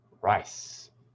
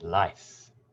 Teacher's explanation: the tongue moves forward and up and briefly touches the top of the mouth just above the top teeth